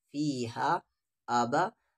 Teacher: مد کے سمبل کے بعد حمزہ ہے یعنی اس کو 3 سے 4 الف کے برابر